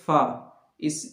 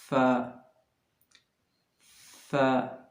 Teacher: आपके दोनों होंठ बिल्कुल सटेंगे नहीं, बल्कि फर्क रहेंगे हल्के, जैसे फ। अगर दोनों होंठ सट गए तो गलत हो जाएंगे, फा हो जाएंगे वो, और ये सही नहीं है।